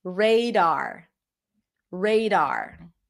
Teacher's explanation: So, we have two strong vowels here. No schwas.